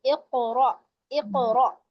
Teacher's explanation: اقرا پہ قلقلہ ہو رہا ہے قاف پر, اور را پہ وہی حمزہ, تو جھٹکا ہوگا.